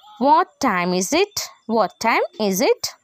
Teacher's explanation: ఒక ఫ్రెండ్లీ మేనర్గా మాట్లాడేటప్పుడు మనము WH క్వశ్చన్స్లో మనం రేజింగ్ టోన్ యూస్ చేస్తాం